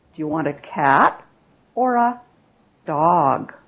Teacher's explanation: so it's rising and then Rising falling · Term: Alternatives